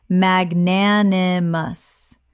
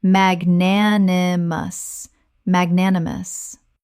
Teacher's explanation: Four syllables with the stress on the second,